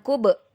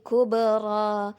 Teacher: Maka dipantulkan dia senatural mungkin, tidak menambahkan hamzah pada pantulannya. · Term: Qalqalah